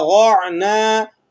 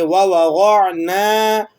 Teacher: الف ساکن ہے اور اس سے پہلے زبر ہے، تو یہ الف مدہ کہلاتا ہے، اسے ایک الف کے برابر آپ نے کھینچنا ہے